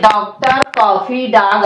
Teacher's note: आ के ऊपर अर्धचंद्र लगा दिया और अर्धचंद्र लगने पर आ में ओ का साउंड आने लगा। और ऐसे अंग्रेजी के शब्दों में जैसे डॉक्टर, कॉफी, डॉग आदि ऐसे शब्दों में जिसमें ओ के साउंड की आवश्यकता थी, उसमें आ की मात्रा के ऊपर जो है ये अर्धचंद्र लगा दिया गया।